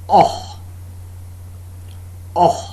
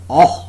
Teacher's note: the jaws are wide open and there is slight open lip rounding slight open lip rounding the tongue tip is behind the lower